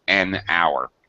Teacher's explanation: we don't pronounce the H so it's an hour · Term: mute